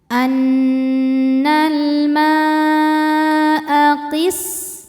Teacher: Mad tabi'inya alif didahului fathah, hamzahnya a ada pada kata al-ma'a. Maka mimnya panjang, boleh 4 boleh 5 harokat. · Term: mad wajib muttasil